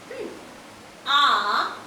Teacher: আ একদম নিচের দিক থেকে উচ্চারিত হয়, তাই আ হলো নিম্ন স্বরধ্বনি